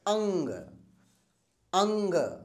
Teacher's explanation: कम निकलते जब हम इस वर्ण का उच्चारण करते हैं तो नाक से हमारे अधिक सांस निकलती है और मुंह से कम निकलती है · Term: अनुस्वार